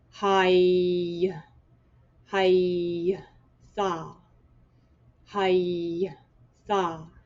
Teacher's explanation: So it sounds like it's one syllable, but you make sure you completely sound out the y.